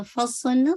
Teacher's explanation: فصلنا سواد ہیوی کیجیے گا، فا کو نہیں، فا نہیں، فصلنا سواد کو ہیوی وتھ وسلنگ کے ساتھ ، نا کو آپ نے انشاءاللہ 2 کاؤنٹ اسٹریچ کرنا ہے،